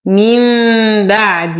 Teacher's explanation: نون ساكنة وبعدها الباء في كلمتين فالحكم إقلاب مع غنة مرققة